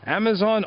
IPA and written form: ˈæməˌzɒn (Amazon)